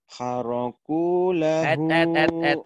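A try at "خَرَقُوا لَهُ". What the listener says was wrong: Kamu lupa lagi haraku. Kho, bukan H. Ayo, lupa terus ho-nya. Khoraku lahu.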